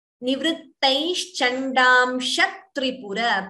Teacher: Please note that an extra t is being heard. The t is doubling before Tripura. So dvitvam there.